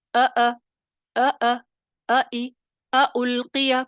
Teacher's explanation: حمزہ جو ہے اقصی حلق سے بھی ادا ہو رہا ہے، اور اس میں کیا ہے، صفت جہر بھی ہے اور شدت بھی ہے